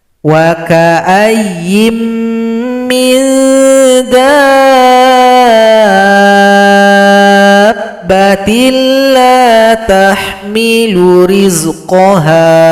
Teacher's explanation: Di sini ada mad lazim mutsaqqal kalimi. Panjangkan dal 6 ketukan atau 6 harokat, baru tasydid kepada huruf ba.